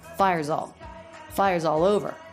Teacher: the ending z sound of fires links into the next word